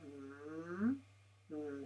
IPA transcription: m